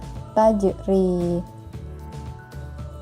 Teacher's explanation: huruf Jim yang ada pada lafaz tajri itu disukun sehingga cara membacanya harus dipantulkan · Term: Qolqolah Sugro